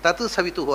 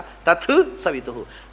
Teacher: ತಕಾರ ಥಕಾರ ಆಗುತ್ತೆ ಸಂಧಿ ಆಗುವಾಗ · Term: ಮಹಾಪ್ರಾಣ